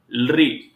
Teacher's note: लरी बोलते समय सक्रिय अंग दंत है। हमारी जिह्वा जो है दंत से टकराती है।